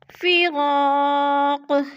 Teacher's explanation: فراق پہ الف مدہ ہے، اور قاف کو وقف کی صورت میں ہلا کر پڑھیں گے، یعنی قلقلہ کریں گے